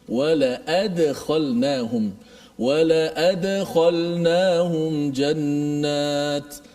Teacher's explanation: Dal yang mati tu. Dal tu dimati, kemudian dilantunkan bunyinya.